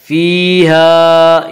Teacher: یا مدہ کو ایک الف کے برابر کھینچ کر پڑھیں گے۔